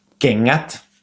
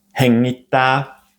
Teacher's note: But when it follows the n the g does not have that sound. The two letters together ng represent a nasal sound very very similar to the English sound in the word sing.